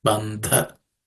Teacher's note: This dha is also aspirated because it's the fourth letter in the tha varga or tha class of consonants.